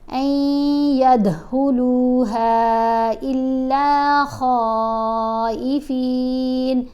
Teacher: نون یہاں پر بھی خاموش ہے، الف کو آپ نے یا سے ملانا ہے، یا حروف یرملون میں ہے نا، تو غنہ کرتے ہوئے این ید، دال کے اوپر آپ نے کیا کلکلا، دال کی آواز کو ہلانا ہے۔ ہا کو، اس والی ہا کو آپ نے 3 الف جتنا لمبا پڑھنا ہے، اور اس خا کو آپ نے 5 الف جتنا لمبا پڑھنا ہے۔